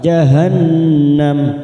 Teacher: Nun yang bertasjid bacaan gunah kita tekan tiga atau dua harakat